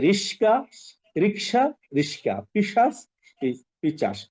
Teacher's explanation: ব্যঞ্জন বর্ণের যদি স্থান পরিবর্তন হয় তখন সেটাকে বলে ধ্বনি বিপর্যয়